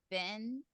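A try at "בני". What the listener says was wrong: Close, but there's a yod at the end. B'nai.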